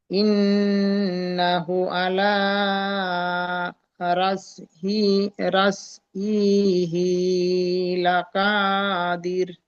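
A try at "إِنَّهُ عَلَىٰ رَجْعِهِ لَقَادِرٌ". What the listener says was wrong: দেখেন দু জায়গায় একটু ভুল হয়েছে, একটু দেখে নেবেন। ইন্নাহু, এখানে হা উল্টা পেশ হু ও মাদ্দার সমান, একালিফ টান দিতে হবে। উল্টা পেশ কার সমান? ও মাদ্দার সমান। ও মাদ্দার সমান। ও মাদ্দাকে যেমন একালিফ টান দিতে হয়, উল্টা পেশকেও একালিফ টান দিতে হবে। ইন্নাহু আলা রাজিহি, এখানে হা খাড়া জের হি টান দিতে হবে। আলা রাজিহি লাকাদির, লাক, এখানে কফ আলিফ জাবার ক, মুখ গোল করতে হবে, লাকাদির হবে না, লাকাদির।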